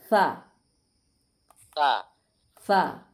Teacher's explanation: জিব্বার আগাটাকে সামনের উপরের দাঁতের আগার সাথে লাগাইছে